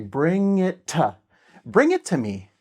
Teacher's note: It's like one T sound when you have the two T's together. It just becomes one T.